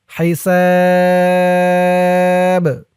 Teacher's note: করার কারণে বার নিচে জেরটা যখন সাকিন হয়ে যাবে তখন এই বাটা কলকলার হরফ হয়ে যাবে লাস্টে একটু ধাক্কা খাবে আওয়াজটা